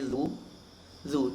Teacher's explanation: ujung lidah menyentuh gigi seri bagian atas